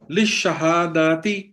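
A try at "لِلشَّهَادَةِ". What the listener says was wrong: للشہادتی، دال کو بھی چھوٹا رکھے.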